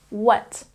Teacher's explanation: that we don't say the H sound we're not saying wut we're taking out the H sound and simply saying what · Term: W sound, silent H